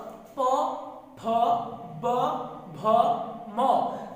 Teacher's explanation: অর্থাৎ এই প বর্গীয় ধ্বনিগুলো উচ্চারণ স্থান হচ্ছে ওষ্ঠ